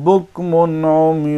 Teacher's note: تنوین کے بعد عین آیا تو اظہار ہوگا، یعنی نون کی آواز ظاہر ادا ہوگی، ظاہر ہو کر ادا ہوگی، یعنی دیر نہیں کریں گے۔